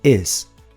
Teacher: Um I relaxado terminando em Z. Is.